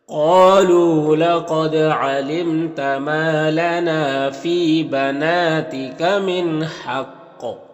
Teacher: یہاں پر نون میں اظہار حقیقی ہوگا اور حق قاف حروف مستعلیہ میں سے ہے، یہاں پر وقف کریں گے تو قاف میں قلقلہ بھی ہوگا